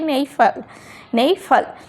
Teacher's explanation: পরের সিলেবলে পি আছে বলে এখানে আর আমরা পি উচ্চারণ করতে পারবো না